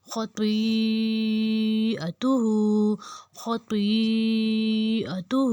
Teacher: الٹا پیش ہے اس کو ہم 2 حرکت لمبا کریں گے۔ یہاں پہ جو مد ہے مد کو 4 حرکت لمبا کریں گے ، خطیئتہ خطیئتہ، ہا کو اوپر الٹی پیش ہے 2 حرکت · اس کی مد کی حرکت کو 4 حرکت لمبا کریں گے، اور جو ہا کے اوپر الٹا پیش ہے اس کو ہم 2 حرکت لمبا کریں گے